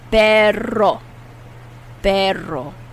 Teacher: How do you say dog in Spanish? You have to roll your tongue and get that R.